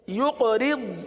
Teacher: اب یہاں قاف پر قلقلہ کریں گے، را کو تو باریک پڑھیں گے لیکن ضاد کو پر پڑھیں گے